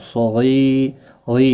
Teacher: सगी या मद्दा है, एक अलिफ के बराबर खींच कर पढ़ेंगे। तनवीन के बाद हल्की हमजा है, इजहार हल्की होगा, गुन्ना नहीं होगा।